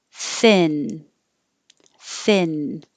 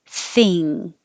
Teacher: instead of the tongue going high in the back at the end the tongue is coming up in the front